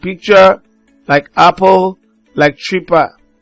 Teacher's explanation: It's a voiceless bilabial plosive consonant sound.